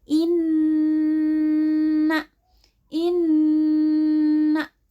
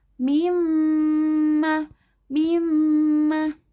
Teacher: huruf nun dan mim selain dari sumber asalnya ditambah dengan dengung yang bersumber dari rongga hidung. · Nah, bacaan guna dibaca dengan mendengung di rongga hidung. Cara membacanya didengungkan di hidung, ditahan 2 harokat.